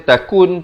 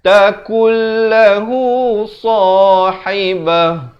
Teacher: Asalnya takun, tapi bila datang lam terus masuk tanpa dengung. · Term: idgham bila gunnah